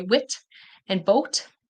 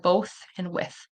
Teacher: they'll pronounce the t instead of the voiceless th . So they'll say wit and boat instead of both and